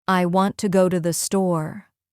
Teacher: The important words are want, go, and store. The other words become softer and faster.